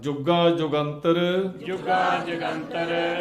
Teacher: ਜਜ ਤੇ ਅਧਕ ਲਾ ਕੇ ਜੋਰ ਨਾਲ ਬੁਲਣਾ